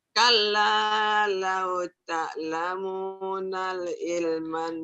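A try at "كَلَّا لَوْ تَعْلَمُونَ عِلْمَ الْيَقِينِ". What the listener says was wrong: Jangan nal. Kan nggak ada alifnya. Kala lauta lamuna ilmal. Jangan nal di sini ya.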